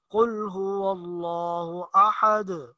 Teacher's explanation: یہ جو آخر میں دال پہ آواز اچھل جاتی ہے اس کو قلقلہ کہتے ہیں